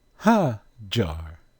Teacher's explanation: they pronounced Hagar not with a strong G sound, but with a soft G sound. Instead of Hagar, they say Hajar.